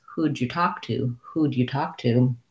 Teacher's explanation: We can reduce the who did. We actually take off the first two sounds of who did, and it becomes who'd.